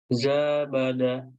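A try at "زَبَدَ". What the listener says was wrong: Zanya tidak punya alif. Dibaca pendek.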